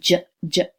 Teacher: the J sound, j, is actually two different sounds put together, the d and the j. Stop and fricative in quick succession. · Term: affricate